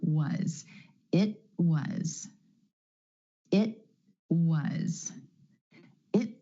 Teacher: the tongue goes up for the T at the end of the word it holds there and then straight into the W sound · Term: held T